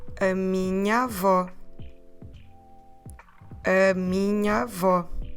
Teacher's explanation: Even if we say it slowly, if minha ends at a and avó starts at a, those two a's together, we don't want to say minha avó. That doesn't flow well. So what we do is those two sounds, we put them into an open a.